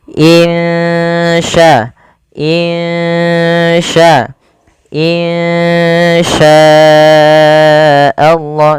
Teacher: cara membacanya samarkan suara nunnya kepada huruf Sya · samarkan suara nunnya kepada huruf sya. Insya, insya, insya Allah, sambil ditahan 2 harakat. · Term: Ikhfa Hakiki, ikhfa hakiki